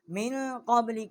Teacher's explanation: بڑی قاف ہے، کوے کے متصل جب زبان اوپر کے تالو کی طرف ٹکر کھاتی ہے